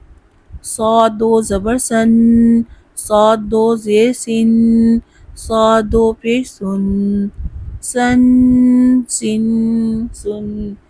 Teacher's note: سین کی طرح صاد کا بھی مخرج ہے لیکن صاد پر پڑھا جاتا ہے